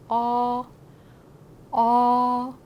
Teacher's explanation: 오도 아니고 어도 아니고 오어를 조금 빨리 한다고 생각해 주시면 되고요. 발음을 할 때 약간 입이 살짝 벌어지는 느낌 납니다.